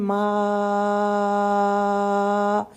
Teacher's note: میم کو ہم 5 کاؤنٹ تک اسٹریچنگ ٹائم دیں گے